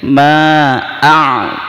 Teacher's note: Di qalqalahnya dipantulkan, dikeraskan juga, ya. Jangan asal a'bud, ya. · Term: qalqalah kubro